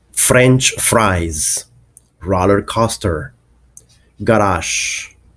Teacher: the R is pronounced in the words, and it doesn't matter whether R comes in the middle, at the beginning, or at the end of the word. It is still completely pronounced. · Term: rhotic